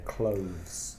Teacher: it's much clearer than Clovis so close it's more difficult to put your tongue between your teeth and make the sound of clothes and also make it voiced from the throat